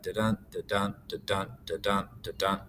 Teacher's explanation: attempting to write an iambic pentameter, where it's unstressed, stressed, unstressed, stressed, unstressed, stressed